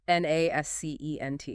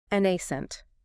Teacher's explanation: 2 syllables. Stress on the first.